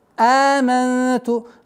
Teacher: Долгота в размере двух огласовок фатхи. Аманту. Удержание назализации в размере двух огласовок.